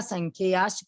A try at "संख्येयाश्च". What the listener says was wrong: संख्याश्च च नहीं बोला आपने, संख्येयाश्च